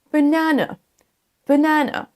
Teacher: Sachez que d'abord, vous prononcez un E, B, léger et pas accentué. Ensuite, c'est un A. On traîne un peu. Na. Et ensuite, on part sur un E.